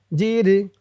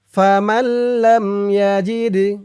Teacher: এই দালটা কলকলার হরফ ধাক্কা দিয়ে পড়তে হবে